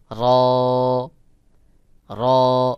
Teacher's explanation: যখন র উচ্চারণ করবেন তখন জিহ্বাটা উপরের তালুর সাথে সর্বোচ্চ দুইবার বাড়ি খাবে